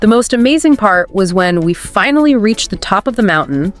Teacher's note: That rise on top and fall on mountain emphasizes the climax. It makes it more dramatic and captivating. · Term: Rising falling intonation, rising falling intonation